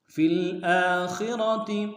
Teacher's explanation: خا کو موٹا ادا کریں گے، را کو موٹا ادا کریں گے، تا کو نرمی سے ادا کریں گے.